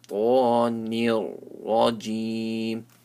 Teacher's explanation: Minash shaytanir, so ta is full mouth. Shaytanir, noon is empty mouth, ra is full mouth. Shaytanir rajim.